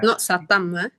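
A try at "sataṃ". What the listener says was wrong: No, satang. M top and bottom dot also NG, but for N is different.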